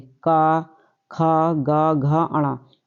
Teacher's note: ये हमारे कंठ से बोले जाते हैं।